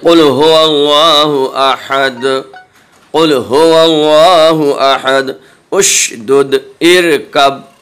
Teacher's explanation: قطب و جد، یعنی قاف، طا، با، جیم، دال۔ یہ حروف جب ساکن ہوتے ہیں تو ان میں آواز میں ویبریشن پیدا ہوتا ہے، کمپن پیدا ہوتا ہے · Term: حروف قلقلہ